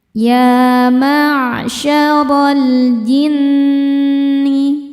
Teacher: Cara bacanya lam dibaca idhar atau jelas. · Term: alif lam qomariyah, alif lam qamariah